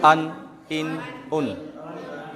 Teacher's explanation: खींचना नहीं पड़ता, और नाक से भी आवाज़ नहीं आना चाहिए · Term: तनवीन